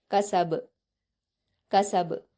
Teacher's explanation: जब हम बा को वफ करेंगे तो ये जज्म में बदल जाएगा और इसको कलकला के साथ पढ़ा जाएगा। · لیکن یہاں پر با کو جزم دے دیں گے تو یہ جب ہم با کو وقف کریں گے تو یہ جزم میں بدل جائے گا اور اس کو قلقلہ کے ساتھ پڑھا جائے گا